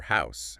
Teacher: the beginning sound in house, that breathy H